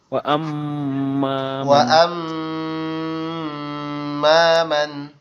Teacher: মানে ওই মিমটা ডবল উচ্চারণ হবে।